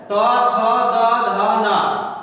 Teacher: ता वर्ग में आते हैं त थ द ध न तो इससे किससे बोला जाएगा? दांत, दंत से